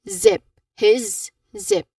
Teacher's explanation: There's vibrations in there which means that really this is voiced um a voiced sound which is a buzzing sound here.